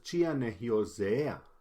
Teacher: Hyosea es el futuro y se cambia el acento a la segunda parte de la palabra al fin.